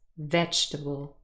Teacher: the second E is not represented by a sound, and the pronunciation is vegetable, stress on the first syllable. And really, those two pronunciations, vegetable and vegetable, they're very different.